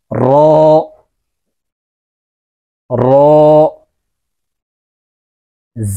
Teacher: র উচ্চারণ করার সময় জিহ্বার আগার পিঠ তার বরাবর উপরের তারের সঙ্গে লাগিয়ে উচ্চারণ করতে হবে। র 1 আলিফ টান দিয়ে উচ্চারণ করতে হবে।